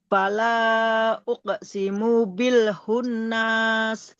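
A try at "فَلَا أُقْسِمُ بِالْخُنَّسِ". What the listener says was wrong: Wala uqsimu bil khunnas. Nanya jangan dipanjang. Nas.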